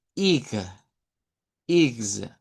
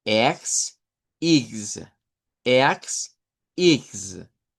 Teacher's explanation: En otras palabras va a sonar como una I corta, una G y una Z o una S vibrante.